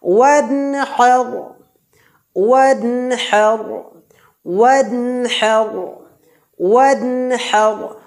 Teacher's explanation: ওয়ান বলে গুন্না করা যাবে না, স্পষ্ট বা জাহির করে পড়তে হবে।